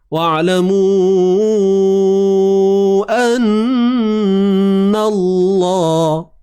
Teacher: an nun bersabdu wajibul gunnah. Wajib dengung tuan-tuan. 2 harakat kadar ada.